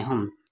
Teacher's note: یہاں میم پر شد ہے غنہ ہوگا